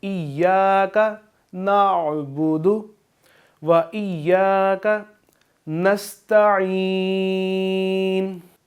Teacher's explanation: अब आइन को आपने वाज़ेह करना है, नाअबुदु नहीं पढ़ना बल्कि आइन को वाज़ेह करना है